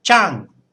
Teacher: you'd say it with a higher tone than you would usually use in normal speech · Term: high tone